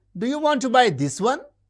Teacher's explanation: the high rise usually associated with questions.